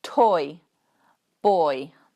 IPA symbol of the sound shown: ɔɪ